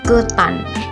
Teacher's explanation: Vokal E tengah atas pusat tak bundar pada kata ketan.